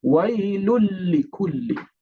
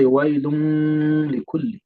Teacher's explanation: So the sound is not going to be coming up there because of the lam that comes right after the tanween. This is called idgham.